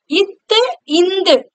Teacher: நாக்கின் நுனி பகுதியானது மேல் பல்லின் அடிப்பகுதியை தொடுவதனால் பிறக்கும்.